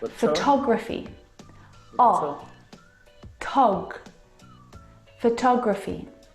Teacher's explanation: Now, if you look at the second example, photography, you can hear the pronunciation is different, and that's because the second syllable is the stressed syllable in this word.